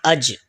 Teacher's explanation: حمزہ جیم زبر اج، جیم یہ زبان کا درمیان اور اس کے مقابل تالو کے میلاب سے ادا ہوتا ہے۔ زبان کا درمیان جب اوپر کے تالو سے ملتا ہے تو جیم ادا ہوتا ہے، تو حمزہ جیم زبر اج، دیکھیں یہاں زبان کا درمیان اوپر تالو سے لگ رہا ہے۔